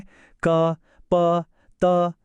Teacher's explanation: ಹೊರಬರುತ್ತೆ ಇವನ್ನೇ ಸ್ವರಗಳು ಅನ್ನೋದು ಆದರೆ ಕ ಪ ತ ಅಂತ ಹೇಳಿ ನೋಡಿ ಗಾಳಿಯನ್ನ ನಾಲಿಗೆ ತುಟಿಗಳು ಹೀಗೆ ಬಾಯಿಯ ಬೇರೆ ಬೇರೆ ಭಾಗಗಳಿಂದ ತಡಿತೀವಿ ಇವೇ ವ್ಯಂಜನಗಳು ನಮ್ಮ ಇವತ್ತಿನ ಪಯಣದಲ್ಲಿ ನಾವು ಈ ವ್ಯಂಜನಗಳ ಹಿಂದಿರು ರ ವಿಜ್ಞಾನದ